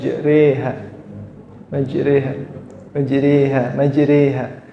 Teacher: dia miring ke kasr bacaan apa namanya imalah